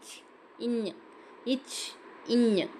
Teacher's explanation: நாவின் இடைப்பகுதி நடு அன்னத்தின் இடைப்பகுதியை பொருந்துதால் பிறக்கும் எழுத்து